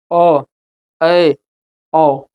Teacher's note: अर्ध विपरीत स्वर कहेंगे तो इसमें आधा मुंह खुलेगा, ओ ए ओ, तो इसमें हल्का मुंह खुलेगा।